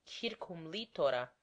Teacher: For when I say circum litora, I pronounce the phrase as one word, concealing the fact that it is composed of two. Consequently, it contains but one acute accent, as though it were a single word.